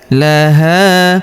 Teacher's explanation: huruf ha kita panjangkan 2 harokat karena terdapat alif di depannya.